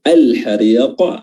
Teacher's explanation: Adabul hariq, al hariq, di sini ada alif lam al qamariyah, lamnya yang sukun ini bertemu dengan huruf ha dan lamnya dibaca izhar, dibaca jelas. Al hariq huruf ra dibaca tarqiq karena berharakat kasrah.